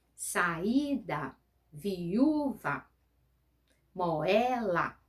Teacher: O hiato, eu tenho duas vogais pronunciadas separadas.